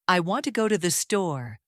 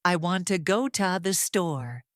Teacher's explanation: In natural American rhythm, we stress want, go, and store. · The unstressed words become shorter. To becomes ta.